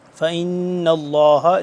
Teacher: اللہ شاکر علیم فإن اللہ اس پہ ہم غنہ کریں گے لفظ لام کو اللہ کو موٹا پڑھیں گے کیونکہ اس سے پہلے زبر ہے